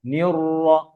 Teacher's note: না, র দুইটাই মোটা, নিয়র র, যেমন নীল র যেন না হয়।